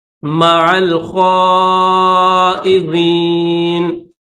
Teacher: عین کو لام کے ساتھ ملائیں گے